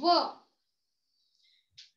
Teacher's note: व या व्यंजनाचा व या व्यंजनाचा जो उच्चार आहे हा दोन वेगवेगळ्या उच्चारस्थानातून व आपण त्याला म्हणतो व. व म्हणताना दातांचा ओठांशी संबंध येतो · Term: दंतौष्ठ्य